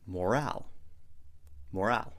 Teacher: Make sure to put the stress on the second syllable.